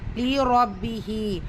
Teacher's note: ரா பத்ஹா வச்சு வந்திருக்கு வல்லினமா ஓதணும்